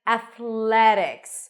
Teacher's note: practice it we start with a sound a a and then it's a th sound F keep the tongue out and then pull it in for the l a a and then athletic notice that the t is pronounced